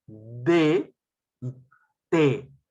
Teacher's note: el ápice o la punta de la lengua va hacia la zona dental y se pronuncia D, pero mira, se aproxima también mis incisivos inferiores. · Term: dentales